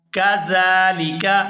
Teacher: زال پر کھڑی زبر ہے تو اس کو کھینچ کر ادا کریں گے